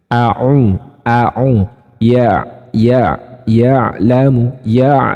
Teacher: Ain itu teman-teman letaknya pada wastul halqi atau bagian tengah tenggorokan bersamaan dengan huruf ha. · Kalau ain, nafasnya tertahan, suaranya tawassut.